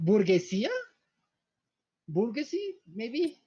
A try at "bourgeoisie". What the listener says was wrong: You're putting in the emphasis on the wrong syllable.